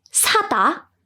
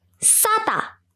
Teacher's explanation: So definitely 사다 used more air than 싸다. The tense sound used the least air.